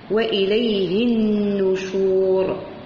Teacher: نون مشددة بغنة مقدار حركتين والراء تفخم